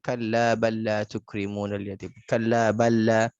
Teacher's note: Kalla balla bal dengan la ya bal dengan la. Masukkan lam yang pertama ke lam yang kedua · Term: mislain